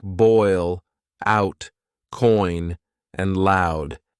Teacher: These are complex vowel sounds that begin with one vowel sound and glide into another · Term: diphthongs